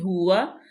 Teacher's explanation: ہا جو ہے وہ انتہائی حلق سے، ہا مضموم بھی ہے، اور واو جو ہے اس پہ زبر ہے، اس کو ہونٹوں کی گلائی سے ادا کریں گے۔